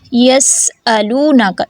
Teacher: سین کی صفیر کو واضح کریں گے